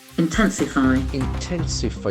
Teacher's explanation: It's a beautiful verb having the accent on the second syllable.